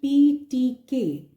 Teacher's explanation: these are voiceless consonants because there is no such vibration which is happening